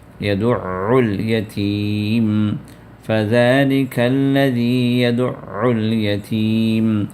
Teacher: عین کو شدہ ہونے کی صورت میں اس عین کو آپ دبا کر ادا کریں گے،